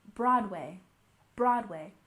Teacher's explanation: Broadway has emphasis on the first syllable